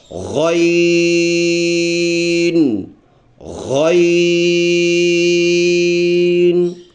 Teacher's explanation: جب یہ ادا ہوگا ایسے لگے گا کہ آواز رک رہا ہے اور ہم اس کو زبردستی دھکا دے رہے ہیں کہ یہ آواز آگے چلا جائے، تو ایسے سختی کے ساتھ یہ لفظ ادا ہوتا ہے۔